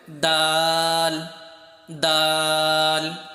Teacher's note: তোমার সামনের যে দাঁত রয়েছে সেই দাঁতের গোড়ার সাথে তোমার জিহ্বার আগাটা লেগে যাবে, লেগে তারপর উচ্চারণ করতে হবে দাল দাল। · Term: ডাল